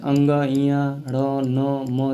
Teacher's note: प्रत्येक वर्ग का जो क वर्ग, च वर्ग, ट वर्ग, त वर्ग, प वर्ग जो होता है, प्रत्येक वर्ग का जो अंतिम वर्ण होता है पांचवा, अंग, इया और ड़, न, म, ये सब नासिक व्यंजन कहलाते हैं। इनका जो उच्चारण स्थान होता है हल्का सा नाक से बोला जाता है। जैसे अंग, इया, ड़, न, म, देखिए नाक से आवाज़ निकल रहा है ना, तो ये नासिक व्यंजन हो जाएंगे।